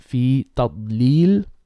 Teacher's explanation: you stick the dad, your tongue, you stick it to the upper palate. It's called adhesion.